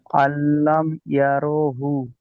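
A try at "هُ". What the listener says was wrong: হুটা একটু টান দিতে হবে, উল্টা আছে তো।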